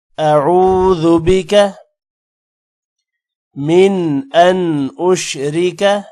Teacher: ذال، با اور کاف کو لمبا نہیں کرنا